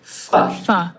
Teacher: It's fricative because air can still flow. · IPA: /f/